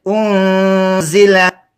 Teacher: د نون لږ وغځوه او دغسې کا پټې کا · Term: اخفا